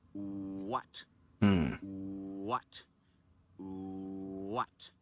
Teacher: The first sound I'm making there is not a W. It's an oo